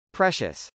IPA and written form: prˈɛʃəs (precious)